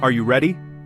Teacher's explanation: For yes no questions, your voice should rise at the end. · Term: rising intonation